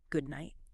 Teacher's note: the D in good is often very light or maybe even silent.